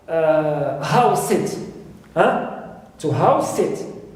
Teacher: so here I stress house. House is noun and sit is a verb. And all of this compound word acts as a verb.